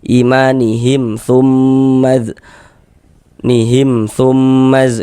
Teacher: Maka dibaca jelas mim soknya tidak didengungkan, dibaca pendek saja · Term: izhar syafawi